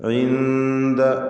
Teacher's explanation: സാക്കിനത്തായ നൂനും ശേഷം ദാലും വന്നത് ഇഖ്ഫാ ഹഖീഖി നൽകി അവ്യക്തമാക്കി മണിക്കണം.